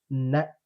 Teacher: நாவின் நுனி மேல்வாய் பல்லின் அடிப்பகுதியை தொடுவதால் நகரம் பிறைக்கின்றது